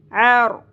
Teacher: عین باریک آواز میں وسط حلق سے